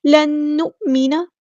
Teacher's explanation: نون ساکن کے بعد نون آیا ہے، یہاں پر ادغام ہو رہا ہے، ادغام کامل ، لن نؤمن حمزہ کی آواز میں جھٹکا دیں گے، لن